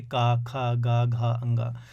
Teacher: कंठव्य जो व्यंजन होते हैं इनको जब उच्चारित करते हैं तो कंठ का प्रयोग ज़्यादा होता है ना। आप देखेंगे का, खा, गा, घा, अंगा।